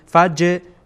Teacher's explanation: جیم اولا گفتیم که وسط زبان هست که ادا میشه به کام بالا در واقع میچسب زبان، یعنی وسط زبان. فج و همچنین اینجا جیم میبینین ساکنه و قلقله هم میشه.